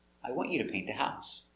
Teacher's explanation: This is affirmative statement. The intonation goes down at the end.